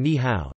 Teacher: when two third tones appear consecutively, such as in ni hao, hello, the first syllable is pronounced with the second tone